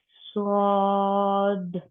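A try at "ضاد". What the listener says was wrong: नहीं स्वा नहीं, SAW सौ, इसी पैटर्न पे जाए,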